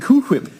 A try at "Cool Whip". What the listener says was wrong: You're putting a lot of emphasis on the H.